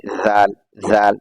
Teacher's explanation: ज़ाल को जब अदा करेंगे तो दोनों दांतों के बीच से अपनी जबान निकाल देंगे, यानी ज़ाल, ज़ाल, दोनों दांतों के बीच से अपनी जबान निकालेंगे।